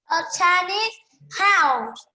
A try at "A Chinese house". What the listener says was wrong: Say the word S. Don't forget the letter S. Oh, you keep on forgetting the letter S in saying the word.